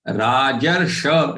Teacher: this is shatkun or the retroflex sha. So for this, the tongue has to be actually rolled back up. Okay. And then only you get this sound.